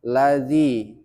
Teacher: Dzi panjang karena harakat kasrah bertemu dengan ya sukun. Jadi hukumnya mad thobi'i. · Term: mad tabi'i